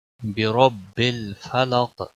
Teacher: रा पुर पढ़ेंगे क्योंकि रा के ऊपर ज़बर है